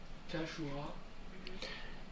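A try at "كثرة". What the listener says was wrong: Shin? Le shin, elle a 3 vagues, comme on a dit tout à l'heure. 3 vagues. Hein? Tandis que celle-ci, elle a une seule.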